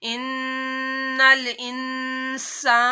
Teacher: नून साकिन के बाद सीन आ रहा है, यहाँ भी आप लोगों ने नाक में आवाज लेके जानी है।